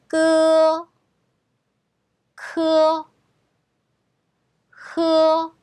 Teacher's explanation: 자, 요거는 설근음이라고 하는데 혀 뿌리에서부터 거세게 내뱉는 음이라고 보시면 돼요. 그래서 예를 들면 이렇게 뿌리에서부터 이렇게 쭉 내뱉는. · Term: 혀 뿌리 소리